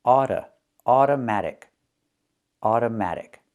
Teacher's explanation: the first O is pronounced with the uh sound like in cup and up.